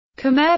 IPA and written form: kmɛər (Khmer)